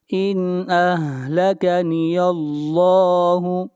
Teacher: ارأیتم ان، ارأیتم ان اہلکنی اللہ، یہاں پر اظہار ہوگا، ان اہلکنی اللہ، یہاں پر لفظ اللہ کو موٹا پڑھا جائے گا، اس لیے کہ لفظ اللہ سے پہلے یہاں پر زبر ہے